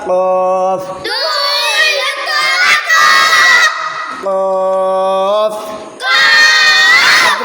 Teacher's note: জিহ্বার গোড়া বরাবর উপরে তালুর সঙ্গে লাগাইয়াম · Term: দুই নুক্তাওয়ালা কফ